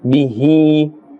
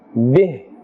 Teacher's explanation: if we are continuing we will say bihi, and we will continue. If we are stopping, bih.